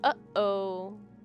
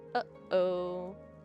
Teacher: The pause in the middle is a glottal stop. · you can feel your glottis closing and your vocal folds coming together, and you can feel it when they pull apart.